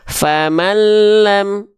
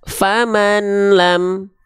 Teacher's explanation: Harusnya kita baca famallam, bunyi an-nya di sini ya. Bunyi an-nya di sini masuk ke lam. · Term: idgham bila gunnah